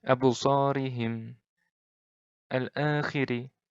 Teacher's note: Ri-nya ini pendek. Ri-nya ini tipis. Ri-nya tipis. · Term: ro' tarkik